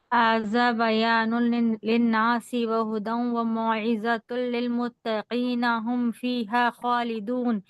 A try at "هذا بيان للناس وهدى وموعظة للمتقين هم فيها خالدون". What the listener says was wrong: یہ ملانا نہیں ہے, ملا کے نہیں پڑھنا ہے.